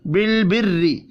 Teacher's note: مدہ کو ایک الف کے برابر کھینچ کر پڑھنا ہے، بالبری را کو زیر کی وجہ سے باریک پڑھیں گے